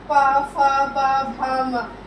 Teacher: इसमें जो हमारे होठ है खुलेंगे, बंद होंगे, इसलिए हमने इसको क्या नाम दे दिया, ओष्ठ